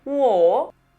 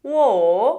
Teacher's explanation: Este diacrítico nos dice que el tono es alto, bajo, alto.